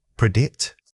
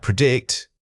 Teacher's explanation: The correct pronunciation is to heavily emphasize the second syllable making it sound like predict.